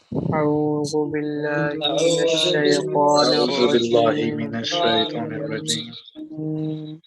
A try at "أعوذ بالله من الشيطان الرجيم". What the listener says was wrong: ہاں مجھے عرفہ کی آواز لگی کہ اعوذ تھوڑا سا زال کو پر کر دیا، موٹا کر دیا، زال کو موٹا بالکل نہیں کرنا۔ اعوذ باللہ من الشیطان الرجیم۔